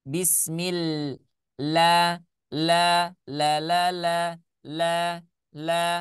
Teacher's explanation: Kita lanjut ya, ba-nya jangan sampai hilang, hati-hati. Kemudian huruf Allah jangan dibaca tebal.